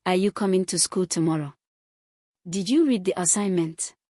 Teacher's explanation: The rising tone invites a yes or no response.